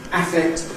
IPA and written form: ˈæfekt (affect)